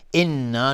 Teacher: نون تشدید 2 حرکت غنه میدیم